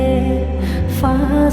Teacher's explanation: ফায়ের মাখরাজ নিচের ঠোঁটের পেট উপরের দাঁতের আগা লাগিয়ে ফা সহি হয়ে আসবে